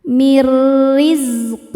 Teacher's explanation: bacanya nun dimasukkan ke ro tanpa berdengung. Mirrizq. Huruf ro dibaca tarqik karena barisnya di bawah kasrah. · Cara bacanya nun dimasukkan ke ro tanpa berdengung. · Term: idgham bila gunnah